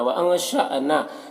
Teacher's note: یہاں پر حمزہ ساکنہ جھٹکا لگے گا, نام الف مدہ ایک الف کے برابر کھینچے گا.